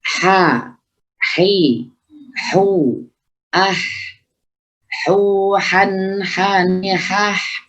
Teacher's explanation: punya sifat hamash, ya, samarnya suara, punya sifat rukhawah, mengalirnya suara, yaitu ha. Itu jadi ketika pengucapan ha harus maksimal muncul dari tengah tenggorokan.